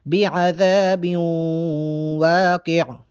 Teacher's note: بعذا، زال کے آگے الف مدہ ہے، زال کو 1 الف کے برابر لمبا کر کے پڑھیں گے۔ با کو جب واو کے ساتھ ملائیں گے یہاں پر غنہ ہوگا۔